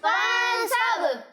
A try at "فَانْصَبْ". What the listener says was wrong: صب نہیں صب، صاد کو موٹا پڑھنا ہے۔ ٹھیک ہے؟ فانصب،